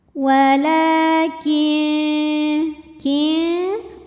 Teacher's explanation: nunnya dibunyikan samar-samar siap-siap menuju makhraj huruf syin disertai bunyi dengung dengung dan samarnya seimbang karena syin makhrajnya tidak terlalu dekat juga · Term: ikhfa ausat